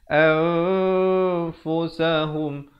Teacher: Dibacanya samarkan bunyi nun dan fa itu. Maksudnya di antara kedua-dua huruf. Nak kata nun pun tidak, nak kata fa pun tidak. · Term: ikhfa